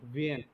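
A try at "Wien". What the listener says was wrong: না, লাস্টে ই ই না, তাহলে ভিন ভিন।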